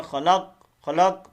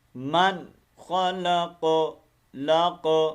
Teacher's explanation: اب چونکہ یہاں پر سٹاپ کر رہے ہیں ہم, تو اس قلقلے کو واضح کرنا ہے. پڑھتے ہیں خلق خلق, تو یہ غلط ہے.